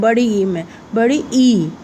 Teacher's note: बड़ी ई की परिभाषा है कि यह सबसे कम मुँह, जो हमारा मुंह है वो कम खुलता है बड़ी ई में